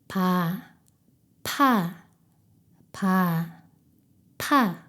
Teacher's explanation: 두 입술을 더 강하게 붙여 공기를 막았다가 공기를 세게 터뜨리면서 내보냅니다. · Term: 피읍